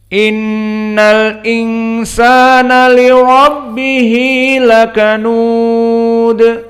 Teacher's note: Maka ucapan Allah Jalla wa'ala, innal insana, maka huruf hamzah huruf muraqqaqah, inna dan nun kadalik muraqqaqah, namun di sini nunnya gunnah, idan wajabal gunnah, dan nun musyaddadah wajabal gunnah, makhrajuhu dari khaysum, makhrajnya dari hidung.